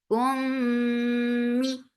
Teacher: This will get akmal gunna. So keep the sound in your nose for a longer time.